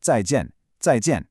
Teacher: we use 2 sharp falling fourth tones. The first part is zai.